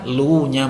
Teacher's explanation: maka luya itu wajib dibaca empat harakat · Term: Mad Jaiz munfasil